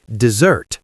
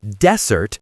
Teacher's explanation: >> The phrase is, "What do you have for dessert today?" >> Be careful with the word dessert. The stress is on the second syllable and the s sounds like a Z.